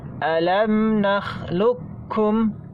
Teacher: Kemudian di sini ada catatan untuk bacaan ayat alam nakhluqukum, ini dibaca dengan idgham kamil. Artinya huruf qaf masuk sempurna kepada kaf. Kita baca alam nakhluqukum, ya, secara sempurna, tidak menyisakan sifat isti'la.